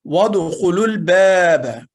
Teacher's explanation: لیکن وَادْخُلُوا الْبَابَ میں 2 الف اور 1 واو سائلنٹ ہو جائیں گے، ان کی آواز شامل نہیں ہوگی